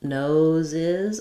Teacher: if I link to a vowel noses I'll hear that z sound more clearly · to make nose plural we add the I sound and another z sound